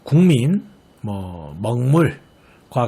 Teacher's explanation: 이 기역 뒤에 오는 미음의 영향을 받아 미음과 같은 비음에 속하는 이응으로 바뀌는 현상이었죠. 국민, 먹물과 같은 경우가 그렇죠. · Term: 비음화